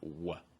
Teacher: my lips are a little bit round but there's no contact with the tooth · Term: a w sound